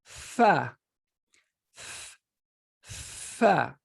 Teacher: And I want you, when you say it, to realize and feel that fa comes from your upper teeth intersecting with your lower lips.